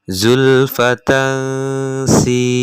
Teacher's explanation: di situ ada fathatain di ta marbutoh bertemu dengan huruf sin, maka hukumnya ikhfa. Maka wajib bagi kalian untuk mendengungnya, menyamarkannya.